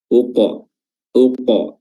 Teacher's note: Uqa, uqa ya, dan makhraj huruf qaf itu makhraj paling terdalam dari bagian lidah, yaitu pangkal lidah bertemu dengan langit-langit bagian dalam · huruf qaf yang sukun di sini mengandung qalqalah atau pantulan